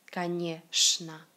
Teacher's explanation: ЧН dans le mot конечно se lit tout simplement comme ch